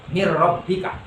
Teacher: nunnya hilang bunyinya, langsung masuk ke ra, tapi tidak boleh disertai dengan dengung. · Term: idgham bila gunnah